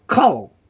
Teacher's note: Kol, now in this case, because it's a closed syllable, there's no vowel following it, this sound, which would normally be an A, is an O sound. So it becomes kol, meaning all.